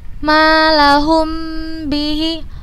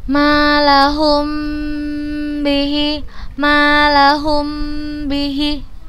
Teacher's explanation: ini huruf mim bertemu dengan huruf ba, maka kita bacanya dengan gunnah yang dipanjangkan. Malahum bihi, dua harokat boleh. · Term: ikhfa syafawi